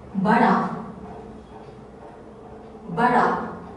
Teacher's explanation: So this is a very prominent sound which has the R sound, R and D together. It's just like really fast RD.